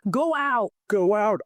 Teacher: As my lips move from the rounded O to the open out, I physically feel my lips making a W sound in the middle. Go out! That is the W intrusion.